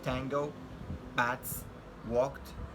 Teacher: Voiceless alveolar stop, as in the words